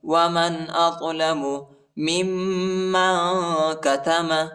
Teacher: میم کو دوسری میم کے ساتھ ملائیں گے اور غنہ کریں گے